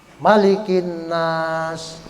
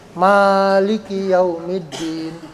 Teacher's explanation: pembacaannya kata maliki itu pendek, beda dengan maliki yang ada di surah Al-Fatihah. Kalau di surah Al-Fatihah kan panjang. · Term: maknya pendek